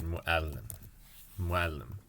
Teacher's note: the technical term, I believe, for what is happening here with this little apostrophe that represents a hamza is called a glottal stop linguistically. So it's like in the English word if you're trying to say no, like you kind of have to put a stop in the middle, and give the second vowel another another sort of jump of its own, if you will.